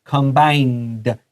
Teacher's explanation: 這個有 n, 在 -ed 前面， so just like planned, 這個也要發 /d/ 的音